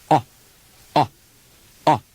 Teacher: the English version is a short quick sound with the lips gliding forward and closing quickly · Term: short o